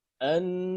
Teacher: Jadi adapun huruf ha kita baca ha biasa saja, ya, lidah datar, pangkal lidah tidak naik ke atas. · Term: istifal